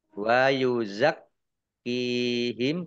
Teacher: kafnya dibaca double ada tasdidnya wa yuzak kihim kaf kasroh ya sukun mat tobi'i panjang 2